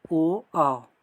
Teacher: ओ आओ का उच्चारण स्थान कंठोष्ठ कंठ प्लस ओष्ठ।